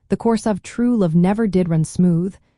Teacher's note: stressing the word true in the phrase, The course of true love never did run smooth, makes the idea feel more powerful